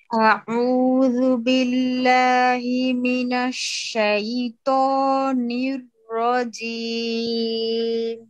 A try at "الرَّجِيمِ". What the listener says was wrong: নীল রাজিম। নীল আরেকটু জিহ্বা উপর দিকে উঠাইতে পারলে উঠাবেন ইনশাআল্লাহ, ঠিক আছে আপা?